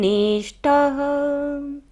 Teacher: ट के बाद क्या है, विसर्ग है, सारी सांस हमें बाहर छोड़नी है।